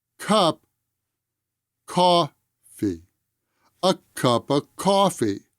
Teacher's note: the article and the ah sound of of are both unstressed